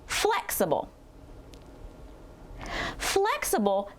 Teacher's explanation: let's use the unstressed uh sound for the second syllable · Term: schw sound